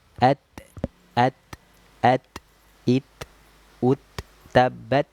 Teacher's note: Ketika kita melafalkan huruf tak sukun itu yang keluar nafas bukan suara. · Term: hams